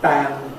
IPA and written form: bæn (ban)